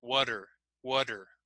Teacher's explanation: because we're linking now it sounds like that D sound